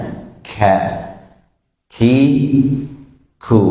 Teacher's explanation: huruf kaf ini ketika kita mengucapkannya itu harus diiringi dengan keluarnya udara atau angin, walaupun tidak boleh juga berlebihan.